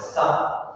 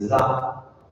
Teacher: you pronounce the sa, you make it vibrate